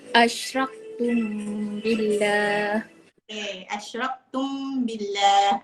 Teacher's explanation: Mim mati bertemu dengan ba, kena tutup mulut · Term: ikhfa syafawi